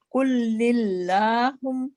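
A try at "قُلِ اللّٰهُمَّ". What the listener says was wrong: قل نہیں قل اللہم قل لام پہ کسرہ ہے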